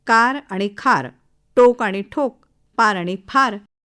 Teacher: परदेशातले अ मराठी भाषक मराठी किंबहुना भारतीय भाषांमधल्या शब्दाच्या सुरुवातीला येणारी अक्षर क ट प उच्चार उच्चारताना महाप्राणाचा वापर करतात या अक्षरांच्या ऐवजी ते ख थ ठ फ असे उच्चार करतात